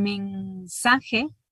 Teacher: lo más probable es que la N se realice como velar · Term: N velar